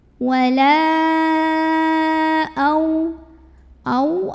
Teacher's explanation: Maka lamnya kita panjangkan boleh 4 boleh 5 harokat. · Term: mad jaiz munfasil